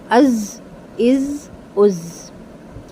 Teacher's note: زا کی آواز میں بزنگ ساؤنڈ ہوتا ہے، جو ہنی بی کا ساؤنڈ ہوتا ہے